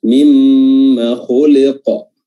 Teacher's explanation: mim yang bertasydid itu durasinya ditahan dibanding dengan huruf-huruf lainnya ketika bertasydid